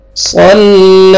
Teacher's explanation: صاد کو موٹا کر کے پڑھنا ہے, لام کے ساتھ ملانا ہے اور لام کو کھینچنا ہے